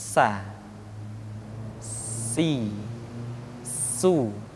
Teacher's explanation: Di antara sifat yang menonjol ketika kita mengucapkan huruf sa atau huruf sin adalah sifat as-safir, di mana ketika kita mengucapkan huruf sa ada suara tambahan yang menyerupai dengan suara belalang.